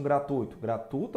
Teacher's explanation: o u de fato é a vogal e o i a semivogal